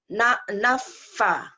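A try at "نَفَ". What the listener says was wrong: Jangan, jangan nafa. Kalau nafa itu double. Nafa, datar.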